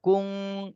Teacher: নুন সাকিনের পরে ইকফার হরফ কাফ, এই জন্য এই নুন সাকিনে ইকফা গুণা করতে হবে।